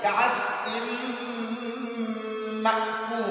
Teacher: तो इस तनवीन को हम मीम में मुदग़म करेंगे, मीम में मर्ज पढ़ेंगे।